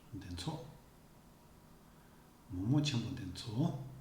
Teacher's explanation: Notice how the intonation goes higher and is longer.